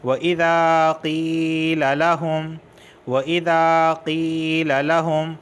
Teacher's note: قی یا ساکن سے پہلے زیر آیا ہے اس وجہ سے میں کھینچ رہا ہوں